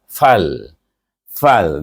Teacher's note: daripada bibir gigi pada bibir bawah fal fal e terus pada makhraj lam dia tengah gusi di